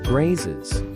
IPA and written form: ɡreɪs (Grace)